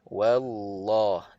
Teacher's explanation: kalau sebelumnya baris atas ataupun baris depan kalimah Allah ini lam di situ kena baca dengan tebal